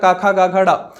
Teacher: का वर्ग किससे निकलता, हमारे कंठ से निकलता। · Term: कंठ व्यंजन